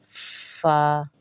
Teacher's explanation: فا ہونٹوں والا حرف ہے فا بھی ہونٹوں سے ادا ہوگا